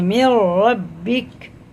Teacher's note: نون کی جگہ را لگائیں گے جب پڑھیں گے میر ربک